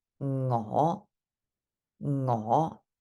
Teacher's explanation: it's the fifth low rising tone